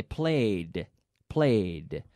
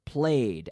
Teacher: you have to force that D sound into the same syllable